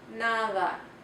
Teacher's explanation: The soft D sound is more like a TH, as in the word nada.